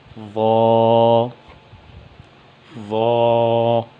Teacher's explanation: اس کے بعد ہے حرف ضا، ضا کو موٹا کر کے پڑھیں گے اور 1 الف کی مقدار کھینچ کر پڑھیں گے اور ضا کا مخرج وہ زبان کی نوک اور اوپر والے درمیان کے جو 2 دانت ہیں ان کا سرا ہے